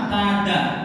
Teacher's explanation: ujung lidah bertemu dengan gigi seri atas dan gusi gigi seri atas, atau dengan kata lain sama dengan makhrajnya ta, da. Nah di situ da itu dengan ta sama tada. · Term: huruf dal